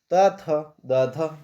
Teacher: त वर्ग त थ द ध दंत मतलब अपने दांतों से बोले जाते हैं